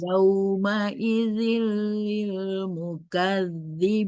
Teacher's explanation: Tanwin ketemu dengan lam dibaca dileburkan tapi tidak didengungkan.